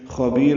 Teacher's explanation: خبیر میں خا پر پڑھیں گے، با کو لمبا کریں گے